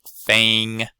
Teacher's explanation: This dialect has a raising of the vowel before eng and g.